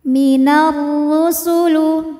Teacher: karena alif lam menghadapi huruf Syamsiah yaitu ro maka alif lam tidak dibaca atau biasa disebut dengan Idgham Syamsi dimasukkan diidghamkan minarusulu huruf ro